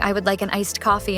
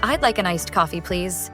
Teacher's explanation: notice how my voice goes up slightly at the end it sounds more friendly and polite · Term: intonation